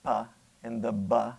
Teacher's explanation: bilabial is something that where you're going to use both lips, right, the upper and lower lip